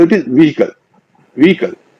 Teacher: व्हीकल में एच का उच्चारण नहीं होता